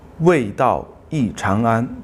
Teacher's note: 为 is fourth tone, not second tone.